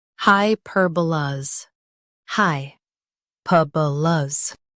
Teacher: Stress per and keep luhs light.